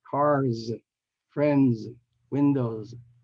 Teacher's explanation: They all have voice sounds at the end and before the S is added